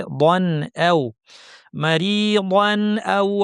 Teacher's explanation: তানউইনের পরে হামজা এসেছে এটা হচ্ছে ইজহার করতে স্পষ্ট করে পড়ে